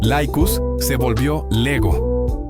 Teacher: Cuando la vocal a latina iba seguida por una i podía cambiar a un sonido intermedio.